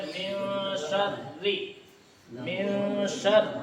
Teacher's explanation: اور جب را کے نیچے زیر آ جائے تو را کو کیا کرتے ہیں ہم لوگ؟ باریک